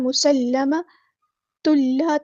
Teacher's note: یہاں پہ لام مشدد ہے اس کو جماؤ کے ساتھ ادا کرنا ہے